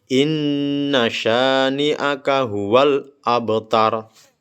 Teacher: Huruf ba sukun yang berada di tengah dibaca memantul dengan sedikit tekanan. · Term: qalqalah sugro